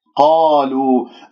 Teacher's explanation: قالوا أتجعل فيها من يفسد فيها، قالوا، القاف مفتوحة بعدها ألف كما ذكرت في كلمة قال ربك، قال هنا مفخمة مرتبة أولى، لكنه لا تكور الشفاه، تقول قالوا خطأ، قالوا واللام مرققة، ولدينا حرف المد في كلمة قالوا.